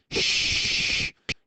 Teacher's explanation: your tongue does not touch the the hard palate it does not touch the alveolar Ridge but it gets very close to the earlier age and the hard palate and then you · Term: fricative